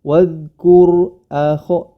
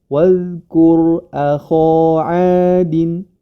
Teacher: Wadkur akho adin, kho-nya saja yang tebal.